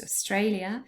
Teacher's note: australia has three syllables and the middle one is stressed